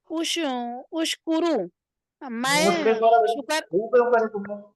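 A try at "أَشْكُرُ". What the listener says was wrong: देखो अलामत मुजारे पर जबर आता है।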